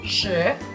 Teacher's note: the second tone is a rising tone. It goes from low to a high pitch.